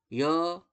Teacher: य को जब बोलेंगे य, तो तालु पर स्पर्श होगा, महसूस होगा आपको, तालु पे स्पर्श होगा।